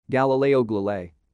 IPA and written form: ˌɡælɪˈleɪ.oʊ ˌɡælɪˈleɪ.iˌ (Galileo Galilei)